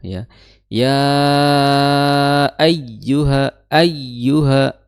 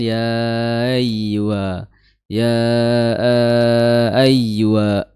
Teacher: Ada huruf tasdid ya. Tasdid di atas huruf ya. Maka ditekan